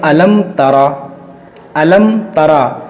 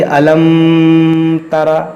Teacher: मीम साकिन के बाद ना मीम है ना बा है, तो यहाँ पर इजहार शफ़वी का कायदा लगेगा, यानी यहाँ पर हम गुन्ना नहीं करेंगे।